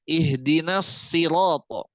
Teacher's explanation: misalkan udah huruf itbaak dia tidak mengenal huruf tipis ya jadi huruf-huruf itbaak itu ketika kasrah dia tetap tebal